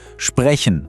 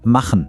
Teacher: Der kommt von weiter hinten, aus dem Rachen. Das ist der Ach-Laut.